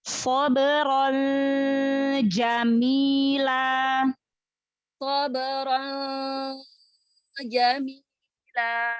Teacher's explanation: Samarkan lagi. Tanwinnya samarkan lagi. Makhrajnya jangan nempel. Makhraj huruf nunnya.